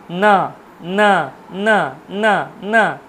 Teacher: দন্ত এবং নাসিকা নাকটাকেও কাজে লাগাতে হবে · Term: দন্তন